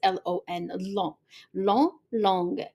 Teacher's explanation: the masculine, the G, you do not pronounce it